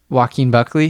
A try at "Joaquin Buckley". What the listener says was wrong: It sounds like you're saying walking Buckley. Joaquin.